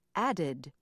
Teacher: tense the word add for example ends with a D and because the following sound is also a d you must place a vowel between the two DS